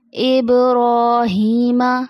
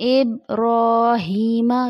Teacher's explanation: ابراہیم، یہاں با پہ جزم ہے، اس سے پہلے بھی آپ سے ڈسکس کر چکے ہیں۔ با کی آواز پلٹ کے واپس آئے گی کیونکہ با حرف قلقلہ میں سے ہے